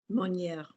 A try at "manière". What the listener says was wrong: When we throw it away, don't homogenize the vowels. Don't go manière. Manière. We're still going to stick to our vowels, but we're just going soft. Manière.